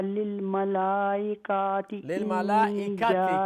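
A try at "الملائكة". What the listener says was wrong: काफ लंबा नहीं है.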